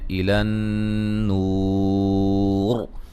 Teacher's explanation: جب وقف کریں گے را موٹی ہوگی اور بڑی مد کے ساتھ وقف کر سکتے ہیں